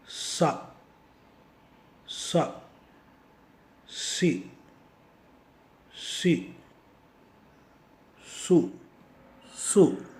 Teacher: உங்களுடைய நாவின் முற்பகுதியானது வாய்க்கு வெளியே போகாமல் வாய்க்குள்ளாரே இருந்து கொண்டு வாயின் கூரையையும் தொடாமல் கீழ்தாடையையும் தொடாமல் இருப்பதை உணரலாம். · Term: சீன்